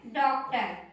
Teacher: इसका उच्चारण होता है औ के जैसे, ये आ और औ दोनों के बीच का उच्चारण है